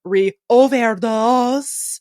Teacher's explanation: Unlike the other words she says, says overdose without any diphthongs